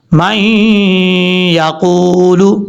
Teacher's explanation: قاف حروف مستعلیہ میں سے ہے، پر پڑھا جائے گا